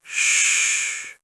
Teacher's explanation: for the sh sound, your tongue moves slightly back. So, not as close to the teeth. Exactly. And the air becomes wider and softer.